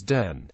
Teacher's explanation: Replacement of dental fricatives, th and theta, like in this and that, with alveolar stops, d and t, so then becomes den